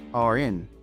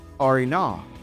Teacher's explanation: the word are links to in, so we get are in. Then from are in, we go to ah, so we get are in awe.